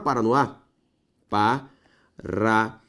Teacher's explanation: Última sílaba tônica com a palavra oxítona.